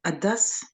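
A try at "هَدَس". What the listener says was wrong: Sauf que la lettre là, c'est le ha et on dit vraiment hada.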